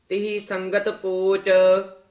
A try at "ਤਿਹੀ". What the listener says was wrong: ਤਿਹੀ ਉਚਾਰਨ ਕਰਨਾ, ਤੇਹੀ ਨਹੀਂ ਕਹਿਣਾ। ਮਨੁੱਖਾ ਅਵਤਾਰ ਦੁਲੱਭ ਤਿਹੀ ਸੰਗਤ ਪੋਚ।